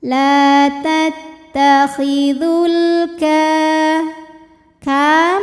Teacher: alif lam menghadapi huruf qamariyah yaitu huruf kaf. Maka lam sukun ini kita bunyikan secara jelas. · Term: alif lam qamariyah